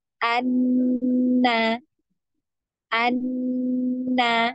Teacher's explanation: ada pertemuan di antara ujung lidah dengan gusi dari gigi seri ya. Nah, gusi bagian atas. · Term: huruf nun